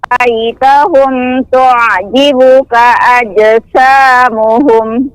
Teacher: di sini huruf sifat sin tipis ya